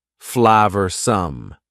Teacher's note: Notice the pronunciation. 2 schwa sounds there.